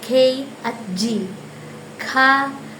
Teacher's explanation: ang ibabaw ng punong dila ay dumidikit sa velum